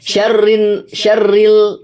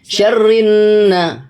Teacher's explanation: bertemu dengan Nun maka ini adalah alif lam syamsiah di mana Alif lamnya melebur ke huruf Na jadi membacanya Bukan syarin syarril tapi syarrinna langsung ke huruf na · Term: alif lam syamsiyah